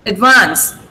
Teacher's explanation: where's the stress? On vance here.